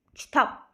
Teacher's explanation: kitab sözündə vurğu, kitab sondadır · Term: Heca vurğusu